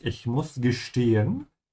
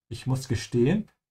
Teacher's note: Always remember s comes before a t. The sound becomes sh.